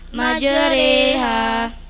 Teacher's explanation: Fathah ra condong pada kasroh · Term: bacaan imalah